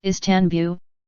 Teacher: while in English the stress is on the first syllable, is, in Turkish it is on the second syllable, tan. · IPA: [isˈtanbuɫ]